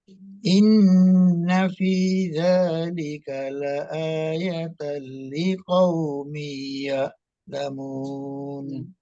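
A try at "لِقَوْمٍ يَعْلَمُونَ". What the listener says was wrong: Mi-nya, ingat, mim, kasroh tain bertemu dengan ya, itu hukumnya, itu idgham bi gunnah. Liqaumi ya'lamun.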